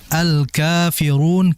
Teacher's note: alkafirun kafnya itu panjang dua harakat, yaitu mad thabi'i.